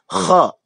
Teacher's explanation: Kha itu dari ujung tenggorokan bersama-sama dengan huruf ghin. Harus beda dengan ha dan juga huruf ha.